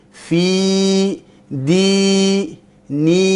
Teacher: Ya yang dibaca panjang, makhrajnya di jauf. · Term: ya al-maddiyah